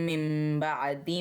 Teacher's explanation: نون کی آواز کو ہم نے میم میں تبدیل کر دینا ہے، کیونکہ نون ساکنیہ تنوین کے بعد حرف با آ جائے تو ہم نے نون کی آواز کو میم میں تبدیل کر دینا ہوتا ہے۔